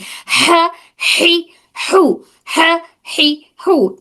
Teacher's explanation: ये वाली ह हमारे हलक के दरमियानी हिस्से से।